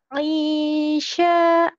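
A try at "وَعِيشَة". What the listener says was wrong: Sin kecil. Wa'isa. Wa'isa.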